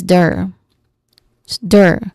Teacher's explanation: There's a short sound, which is a schwa sound, and then followed by an R sound, letter R sound.